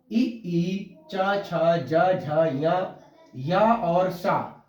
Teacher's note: ई च छ ज झ या और सा, उच्चारण स्थान इनका देखिए तालु है और इसका वर्ग है तालव्य।